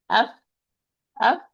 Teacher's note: There is a lot of air is running when I'm pronouncing the fa. So it's harfun mahmus, or it's a voiceless letter.